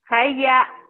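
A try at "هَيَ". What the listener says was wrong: Ha, lembutin.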